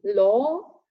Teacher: remember then next we've got the open all as in law this is half open also a back vowel it's long · This is half open. It's also a back vowel. It's long, as you can see by the dots again, and the lips are rounded as well. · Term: open aw